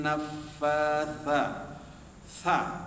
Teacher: kalau tha lidah kita terjulur keluar sikit gigi